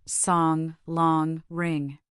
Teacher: Your tongue is in the same position as for a but the air escapes through your nose · This is not simply an N followed by a G. It is a distinct single sound, a veer nasal represented by. · Avoid the temptation to pronounce a hard G afterwards. Saying sing G is a common error. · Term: velar nasal